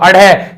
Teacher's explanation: तो अड़े अड़े तो बोलोगे तो जीभ झटके से नीचे की ओर गिर रही है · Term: उच्छिप्त या द्विगुण व्यंजन